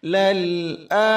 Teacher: Ini lam sukun jangan sampai mantul dan jangan juga ditahan lama. Lal a. Tekanan hamzah 2 harakat dijaga.